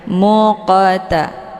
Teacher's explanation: terdapat di pertengahan kalimat ini dinamakan dengan qqalah cara baca ya huruf qnya dipantulkan dengan pantulan ringan · huruf qafnya dipantulkan dengan pantulan ringan, muqata. Jadi dipantulnya sekedar saja. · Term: qalqalah sughra